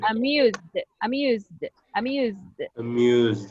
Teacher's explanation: it sounds like a D because this is a buzzing.